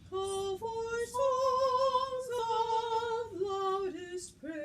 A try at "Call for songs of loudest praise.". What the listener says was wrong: Good, you fix the front and then just the back of your mouth. Let's gargle. Now go songs. Yep, that cleared it up. It's just the back of our tongue just gets a little lazy sometimes.